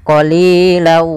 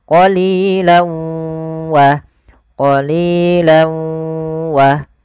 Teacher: awalnya qalilan karena ketemu waw, masuk ke huruf waw, tanwinnya menjadi qalilau. Jadi ganti w karena dia huruf waw itu w identiknya.